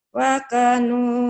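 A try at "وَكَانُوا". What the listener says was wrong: K-nya panjang. Kalau kap gini panjang ya mengandung. Wakanu.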